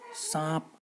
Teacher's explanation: अनुनासिका जो उच्चारण स्थान होता है वह है नाक और मुंह दोनों जगह से